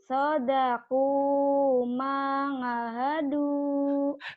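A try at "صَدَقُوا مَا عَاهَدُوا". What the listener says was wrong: Orang mana mangahadu. Jangan mangahadu atuh. Sodaku ma'ahadu gitu ya. A-nya panjang. Ma sama A panjang.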